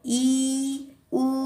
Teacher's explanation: जब आप बोलेंगे तो आप देखेंगे कि ई और उ बोलते समय आपके जो मुंह है ना वो कम खुलेंगे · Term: समवृत्त स्वर